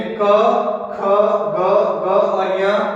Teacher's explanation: इनका उच्चारण कंठ से होता है, इसलिए इन व्यंजनों को कंठव्य व्यंजन कहते हैं। यानी क वर्ग है वो कंठव्य के अंतर्गत आता है।